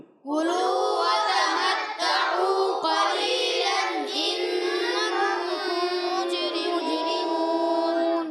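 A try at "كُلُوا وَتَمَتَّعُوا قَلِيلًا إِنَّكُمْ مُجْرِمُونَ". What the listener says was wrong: پھر یہیں سے غلطی ہوئی ہے کہ دیکھیں یہاں اظہار ہلکی ہوگا، پھر غنہ کریں گے، پھر غنہ کریں گے، یہ پہلا غنہ چھوڑ دیتے ہیں آپ، جس کی وجہ سے آگے ہو جاتے ہیں، ٹھیک ہے، اس چیز کو آپ سمجھیں۔ کُلُوا وَتَمَتَّعُوا قَلِيلًا إِنَّكُمْ مُجْرِمُونَ،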